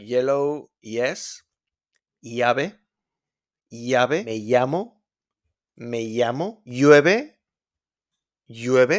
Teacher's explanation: We got the double L in Spanish, don't pronounce it like an L. Normal sound is Y, like yellow, yes, llave, llave, me llamo, llueve, llueve.